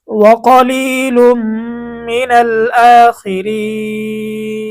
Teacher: তো এখানে জেরের পরে ইয়া সাকিন, মদের হরফ, মদের হরফের পরেই আমরা ওয়াকফ করে দিছি, মধ্যে আরজি হয়ে গেছে ৩ আলিফ টান।